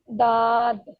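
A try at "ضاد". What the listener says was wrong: थोड़ा और heavy scale पे पढ़ो, थोड़ा हैवी करके पढ़ो। ये one of द heaviest in Arabic है, ये बात याद रखिए, पूरा मुंह खोल के इसको पढ़ना है आपने।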